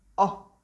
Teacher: the h in italian is silent so we just pronounce an open o sound